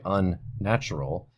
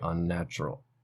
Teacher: we don't say the N twice so we don't say unnatural instead we just make this n longer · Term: lengthening